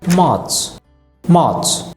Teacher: এখানে দেখুন আর এর পরে কনসোনেন্ট আছে, কাজে আমরা আরটাকে উচ্চারণ করব না